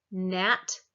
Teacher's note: The alveolar, we put our tongue to our alveolar ridge for n, nat.